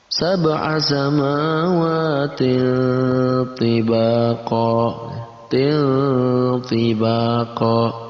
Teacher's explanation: Maka masuk dalam kategori ikhfa, kita baca dengan samar dan ditambahkan ang antara tanwin dan ta.